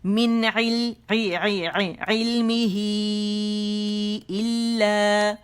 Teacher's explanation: 4 to 5 counts مد صلہ کبریٰ